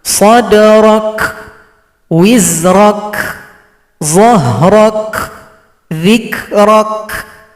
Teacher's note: Ketika mensukunkan huruf kaf, maka berikan juga sifat hamas. Sadrak, jadi ada bunyi k.